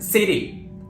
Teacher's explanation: this is when T sounds like a very quick D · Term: flap T